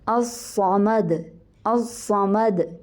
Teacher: آگے سے دال جو ہے اس کے اوپر قلقلہ کر رہی ہوں میں، کیونکہ دال کو میں ساکن کر رہی ہوں